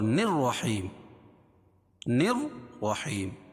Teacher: نون کو را میں ملائیں گے اور را کے اوپر تشدید ہے اور اس کے اوپر زبر ہے، یعنی رائے مشددہ ہے، یہاں اور یہاں دونوں جگہ را پر ہوگی۔